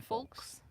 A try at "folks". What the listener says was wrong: The L is silent.